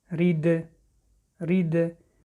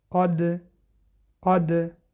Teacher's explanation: حرف دال از جمله حرف‌های قلقله می باشد، یعنی وقتی که با سکون می آید صدا می دهد.